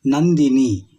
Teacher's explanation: ನಂದಿನಿ ಈ ಪದವನ್ನ ಹೇಳುವಾಗ ನಮ್ಮ ತುಟಿಗಳು ಒಂದಕ್ಕೊಂದು ಸೇರುವುದಿಲ್ಲ ಕೇವಲ ನಾಸಿಕೆ ಮೂಗಿನ ಸಹಾಯದಿಂದ ಇವುಗಳನ್ನ ಹೇಳುತ್ತೇವೆ